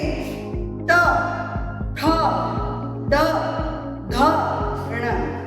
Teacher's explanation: ट वर्ग का उच्चारण करते समय हमारी जीवा तालु से थोड़ा आगे की ओर आएगी, उसका स्पर्श करेगी।